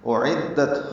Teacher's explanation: حمزہ اقصی حلق سے، عین وسط حلق سے ادا ہوں، دونوں الگ الگ، حمزہ بالجہر ادا ہو، عین نرمی سے ادا ہوتا ہے، دال سے ملاتے ہیں، دال کو تا سے ملانا ہے۔